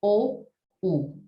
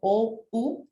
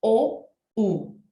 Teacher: la lengua retrocede tanto que hace que los músculos de mi boca también se contraigan y se forme ese embudo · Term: vocales tan posteriores